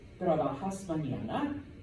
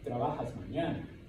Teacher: you know that you need to end the sentence on a rising tone